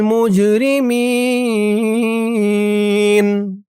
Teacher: আনিল কওমিল মুজরি মিম দিয়ে জিম ধরবে, জিমটা কলকলার হরফ ধাক্কা দিয়ে পড়তে হবে। মুজরি মিন এখানে অক্ফ করার কারণে জেরের পরে ইয়া সাকিন এক আলিফ টান 3 আলিফ হয়ে গেছে। মি বলে 3 আলিফ টান দিয়ে এই নুনকে ধরা হয়েছে, নুনের উপরে জবরটা সাকিন হয়ে গেছে।